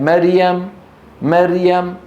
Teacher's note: مريم مر الرا ساكنه قبلها مفتوح يجب ان تكون ماذا مفخمه